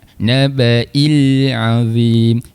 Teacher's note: Ah untuk alif lam qamariah ni pula kita kena hati-hati. Huruf lam jangan dilantunkan. · Sifat huruf lam dia tidak bersifat qalqalah. Kita jelaskan saja huruf lamnya. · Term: alif lam qamariyah